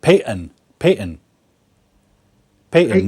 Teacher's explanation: a lot of Americans will pronounce it Peyton, Peyton, Peyton, no T sound. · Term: dropped T sound